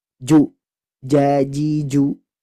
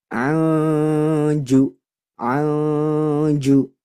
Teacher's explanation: Huruf jim itu sejatinya dia tidak dibaca dengung.